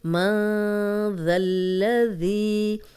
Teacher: نون ساکن کے بعد آگے ذال ہے تو یہاں پہ ہم غنہ کریں گے، اور ذال کو لام سے ملائیں گے، ذال کی زبر لام سے ملے گی کیونکہ لام پہ شد ہے۔